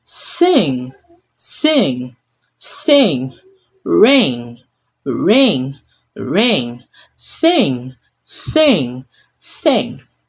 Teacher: the air must flow through the back of the nose like humming from deep inside